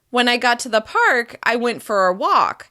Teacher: using a slight rise in intonation after each thought group